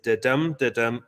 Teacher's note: With the emphasis on the second syllable. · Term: iambic pentameter